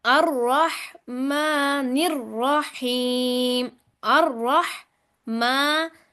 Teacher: را کے اوپر شد بھی ہے اور زبر بھی ہے، را موٹی پڑی جائے گی۔ الرح، را زبر ح، رح، ما، پھر نر، نون کو را سے ملاتے ہوئے سختی اختیار کرنی ہے شد کی وجہ سے، اور پھر را کو موٹا پڑھنا ہے۔